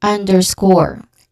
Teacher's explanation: Score is the stressed syllable. Okay, you stress on the last syllable.